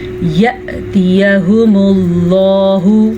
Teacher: لفظ اللہ کو پر پڑھیں گے کیونکہ لفظ اللہ سے پیچھے والے حرف کے اوپر پیش ہے